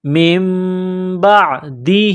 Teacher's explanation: نون ساکن کے بعد با ہے، یہ قلاب کریں گے، آواز ناک میں چھپائیں گے، من بعدہ۔ ہا کے نیچے کڑی زیر ہے، 1 الف کے لمٹ میں کھینچنا ہے، من بعدہ، من بعدہ۔